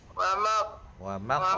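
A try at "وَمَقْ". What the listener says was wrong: ada qalqalah sikit nah. Wa maq. Dia ada qalqalah sikit. Sana saya okey, wa fathah wa, mim fathah qaf sukun maq, ada qalqalah.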